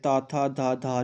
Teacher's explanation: Next त वर्ग जब आप बोलोगे तो आपके दंत को जीभ टच करेगी।